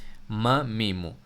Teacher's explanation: دونوں ہونٹوں کے خشک جگہیں مل رہی ہے میم میں